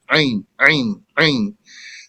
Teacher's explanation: some people, they have like their ayn is hard. It's almost like a hamza.